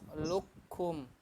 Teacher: Ketika luknya jangan keluarin napas, ditahan. Napas kum baru keluar ya. Lukum, kumnya pas keluarnya gitu ya. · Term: Hames